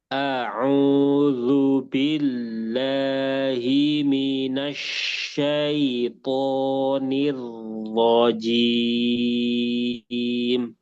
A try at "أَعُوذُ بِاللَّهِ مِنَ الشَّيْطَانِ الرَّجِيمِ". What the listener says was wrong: Au-nya kurang sempurna. Ke U. Au. Nah, nanti bunyinya seperti itu, hanya saja diganti huruf ain. Au, au, au.